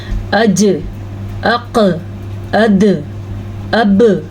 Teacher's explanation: ان پہ ساکن کی وجہ سے کلکلا پیدا ہوتا ہے۔ تو اگر کوئی اس کو پڑھے گا اجسامہم تو اس نے کلکلا ہی نہیں ادا کیا، جبکہ آپ کو قرآن مجید کو درست پڑھنا، قواعد کے ساتھ پڑھنا ضروری ہے۔